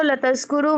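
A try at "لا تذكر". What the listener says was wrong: ला तज़कुर पेश नहीं है इस पे, ठीक है। ला तज़कुर मत जिक्र कर, ला तज़कुरु मत जिक्र करो।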